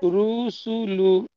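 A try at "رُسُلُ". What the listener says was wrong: হ্যাঁ, হয়েছে পড়া, একটু তাড়াতাড়ি পড়েন, টান দেবেন না।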